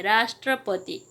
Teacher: राष्ट्रपति शब्द का उच्चारण करते समय रा पर बल पड़ता है, राष्ट्रपति इसे उच्चारण करते समय बल देता है रा शब्द पर। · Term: बलाघात